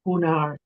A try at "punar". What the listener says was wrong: Again, avoid the temptation to make that long. It's a punar, sorry, avoid the temptation to make it short, it's long.